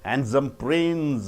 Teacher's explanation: The prince should be stressed, not handsome.